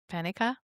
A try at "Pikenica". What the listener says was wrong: I think there's another syllable in there.